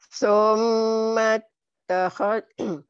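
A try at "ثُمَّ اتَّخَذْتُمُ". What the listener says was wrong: Takhal, jangan tahod. Takhal.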